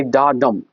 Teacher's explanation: तो यहाँ पे डा जो है अनस्ट्रेस्ड है और ये डम जो है स्ट्रेस्ड है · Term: iambic meter